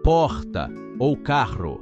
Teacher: esse som retroflexo quando a língua vira para trás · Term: r caipira